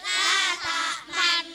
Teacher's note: Bacaan ismam ialah mencucu di tengah-tengah dengung sebagai syarat hitungan.